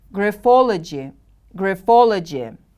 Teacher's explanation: Graphology. The stress is on the second syllable.